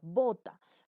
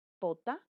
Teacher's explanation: Son dos palabras que se distinguen semánticamente debido a que la B o el fonema B se opone al fonema P por la sonoridad